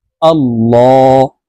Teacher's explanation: দেখুন এই যে আল্লাহ শব্দের আগের হরফ জবর আছে এই কারণে এই লামকে ল অর্থাৎ মোটা করিয়া পড়তে হবে